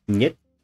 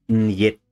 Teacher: so for russian the word for no is net where the the n is palatalized this is different from yet which is the way you might hear someone who does not speak russian trying to imitate a russian accent